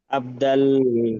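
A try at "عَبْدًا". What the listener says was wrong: দাল নয়, আবদান।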